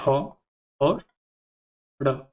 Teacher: जिह्वा की नोक तालु को झटके से स्पर्श करती है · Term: उत्क्षिप्त व्यंजन